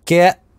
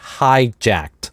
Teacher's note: делает чуть больше паузу, поэтому get, безрелизное /t/, hijacked, и не произносит здесь полноценного /t/.